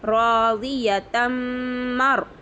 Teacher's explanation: रॉय साकिना से पहले ज़बर है, रॉय साकिना को पुर करके पढ़ेंगे